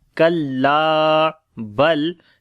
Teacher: lam we read in light sound